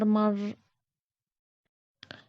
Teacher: را پر جزم ہے، جزم والے حرف کو پچھلے والے حرف سے ملا کر پڑھیں گے۔ رائی ساکنہ سے پہلے زبر ہے، را کو موٹا پڑھیں گے